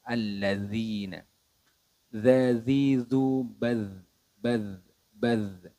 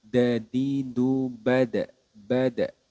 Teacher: sifat huruf dalal ini memiliki sifat suaranya mengalir atau rakhawa